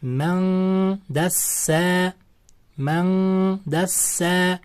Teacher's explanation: Nunni d-ni chiqadigan joyga yashirib, g'unna bilan o'qilyapti. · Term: ixfo